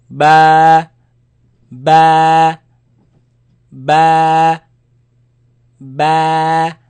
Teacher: the sound is b, comes from the lips. B. It is elongated, it is stretched because of the alif following it.